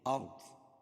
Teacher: ضاد کو موٹا پڑھیں گے، حروف مستعلیہ میں سے ہے